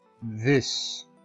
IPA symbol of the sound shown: ð